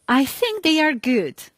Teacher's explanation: I told the sentence with a flat tone of voice, which was showing that I want to continue this sentence. I will add something to it. · In the first case, I told with a falling tone of voice. I told, I think they are good, which means that I have no doubt they are good.